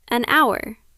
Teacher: In hour, the letter H is silent, so it begins with an ow sound.